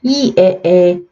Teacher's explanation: 점점점 입이 더 벌어지는 거 느껴지세요? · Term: 전설의 평순모음